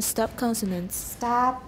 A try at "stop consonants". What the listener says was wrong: Okay, 这两个都是同一个问题，那个 啊要长一点。